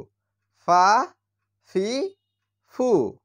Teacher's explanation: ফা এর উচ্চারণ হচ্ছে উপরের দাঁতের আগা এবং নিচের ঠোঁটের পেটের সঙ্গে লেগে উচ্চারণ হয় ফা তাহলে ফা জবর ফা ফা জের ফি ফা পেশ ফু